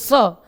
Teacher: षटकोण वाला स बोलते समय मूर्धा पे जीव टच करिए